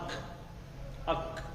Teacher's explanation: تالو سے نکلتا ہے یہ کاف، چھوٹا کاف